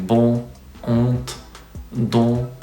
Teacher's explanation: is one of the nasal sounds of the french language so open mid back partially rounded vowel nasalized · open mid, back, partially rounded vowel, nasalized. So it's like in bon, ont, don.